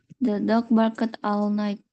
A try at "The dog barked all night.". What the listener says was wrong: ED-nya nggak bunyi. Bark all night. Tapi yang perlu diingat, dari sekarang diingat-ingat nih, akhiran ED nggak pernah bunyi ed.